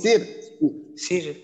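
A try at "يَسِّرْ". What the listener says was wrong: ধাক্কা নয় সির, এমন ধাক্কা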